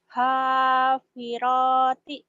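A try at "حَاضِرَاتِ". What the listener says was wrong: Kedengarannya tadi happy roti ya dotnya. Hadirati. Hadirati.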